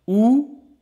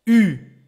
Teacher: Ou, tongue back. Ou, U, tongue pushing forward